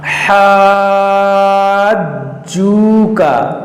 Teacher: حروف قلقلہ ہے اور مشدد بھی ہے تو اس کو پڑھیں گے 2 بار ، حاجو کا، جیم کو 2 بار پڑھا جائے گا اور · بھی ہے تو اس کو پڑھیں گے 2 بار، حاجو کا، جیم کو 2 بار پڑھا جائے گا اور کھینچیں گے بھی، مد لازم کا قاعدہ ہوگا۔